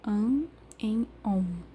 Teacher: forma de pronunciar esses fonemas tipo an em om que é quando tu produz esses sons não só com a boca mas também com o nariz você nasala é uma forma anasalada de produzir bem esses fonemas